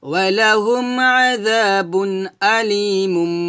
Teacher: মিম দুই পেশ মুম বলতে হবে, মিমের উচ্চারণ করে গুণনা করতে হবে, এটা হচ্ছে ইকলাব গুণনা।